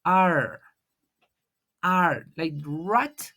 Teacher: No hay un contacto, sino la lengua presiona el aire y rebasa hacia atrás.